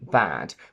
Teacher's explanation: get ready for the terrible sound ah in bad which is a short near open front unrounded vowel meaning that your mouth is very open the blade of your tongue goes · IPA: /æ/